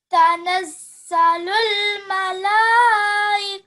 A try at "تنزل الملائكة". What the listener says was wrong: So make that mala very long, okay? Not ma. You see there's a lam here after ma. That has the mud on it, okay? Malaikatu.